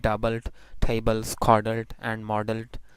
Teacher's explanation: So what happens if suffixes are added to these words? Even then L remains as syllabic.